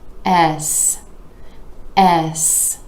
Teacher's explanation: starts out with that e vowel sound where you're dropping the jaw just a bit and moving into the s consonant